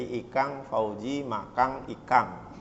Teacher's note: makannya N saja, ikannya N saja tapi jadi Ikang Fauzi Makang Ikang